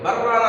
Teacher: لام ساکن کے بعد حروف اربعین سے را آ رہا ہے، اگر ہم ملا کے پڑھتے ہیں، مانا چاہتا ہے کہ ملا کے پڑھا جائے، لیکن جب ملا کے پڑھیں گے تو بررانا ہو جائے گا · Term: ادغام تام